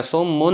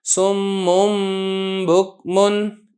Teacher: نون تنوین کی جگہ میں میم پڑھوں گا، نون کو چھپاؤں گا اور ساتھ میں اس میں غنہ بھی کروں گا